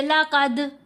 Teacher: اب دال ساکن ہے، تا مشدد ہے، دال کو ہم نے تا کے اندر ہی مرج کرنا ہے۔ اگر ہم علیحدہ پڑھیں تو دال ساکن ہے، پھر تو دال کے اوپر کلکلا ہونا چاہیے، لقد، تو تا کی تشدید پھر کیسے پڑھیں، کس کو ملائیں، اب اس کے ساتھ دال تو ساکن ہو گیا، تو اس لیے دال مرج ہو جاتا ہے، مکس ہو جاتا ہے آگے ہی۔